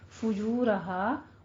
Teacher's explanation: فجو میں آپ نے فا کے اوپر ضمہ ہے، دونوں ہونٹ گول کر کے ادا کرنا ہے. جو میں بھی دونوں ہونٹوں کو گول کر کے واو مدہ ہے ادا کرنا ہے، 2 کاؤنٹ کرنے ہیں، اور را کو پور پڑھنا ہے اور ہا میں الف مدہ ادا کرنی ہے.